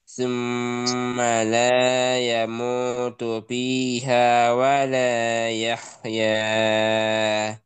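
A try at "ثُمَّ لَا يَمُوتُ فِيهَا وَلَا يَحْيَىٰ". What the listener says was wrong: Nah, ya-nya kebanyakan 2 harakat saja. Ya 2 harakat.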